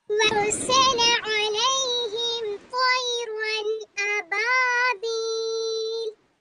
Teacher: अलिफ खाली से पहले बा पर जबर, अलिफ मद्दा, या से पहले बाकी नशीर, यहाँ पर मद्दा हो रहा है, रोकने की सूरत में लाम पर साकिन कर देंगे और या मद्दा को दो अलिफ की मिकदार खींचते हुए पढ़ेंगे